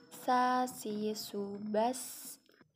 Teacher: Za, zi, zu, baz. Sa, menggunakan lidah terdepan hampir di dekat gigi seri terbawah.